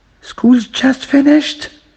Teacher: To make it a question, school's just finished. We have a rising tone here.